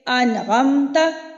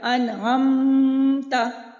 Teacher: میں نے بغیر غنہ کے میم کو ادا کیا، فوراً سے ادا ہو گیا، ظاہر کر کے ادا ہوا